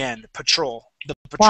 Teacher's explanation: Patrol so instead of saying Patrol we say p Patrol and the accent goes on the end